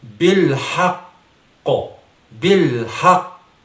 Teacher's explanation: آپ شاید یہ سمجھ رہے ہوں گے کہ میں قاف حرف پر زبر پڑھ رہا ہوں. ایسا نہیں ہے. قاف کو میں ساکن ہی پڑھ رہا ہوں اس دوران، لیکن یہ جو آواز اس کی آپ سن رہے ہیں وہ در حقیقت قاف کی آواز ہے جو کہ مشدد بھی ہے اور قلقلہ مشدد کی آواز ہے.